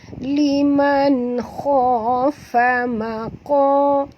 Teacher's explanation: qa sini tebal, huruf isti'la, qa 2 harakat, mi 2 harakat ma asli, wa kha.